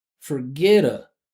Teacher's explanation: All right, and now to link here with this T, we're gonna turn it into a flat T, and since that first syllable here is unstressed, we're gonna make it a schwa. So it's gonna come out as duh.